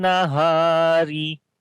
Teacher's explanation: Ra we read in light sound. There is kasra under the ra